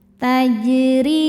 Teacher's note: Cara bacanya jim dipantulkan dengan pantulan yang kecil. Tajri huruf ro dibaca secara tarqik karena ro berharakat kasrah. Cara bacanya roho dibaca tipis.